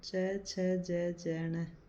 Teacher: तालु या वर्तस्य व्यंजन च छ ज ण, इसमें ई और बड़ी ई भी आती है। इनका उच्चारण स्थान तालु और वर्तस्य मसूड़ा का संधि स्थल है